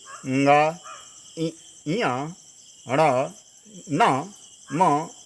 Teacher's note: नासिका मनुगतः अनुनासिकः, नासिका से होकर निकलने वाले वर्ण का नाम भी अनुनासिक है।